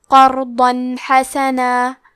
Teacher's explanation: ہم یہاں تنوین ظاہر کریں گے اور اسے نون ساکن پڑھیں گے اور بغیر غنہ سے یہ حکم کو ادا کریں گے۔ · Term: اظہار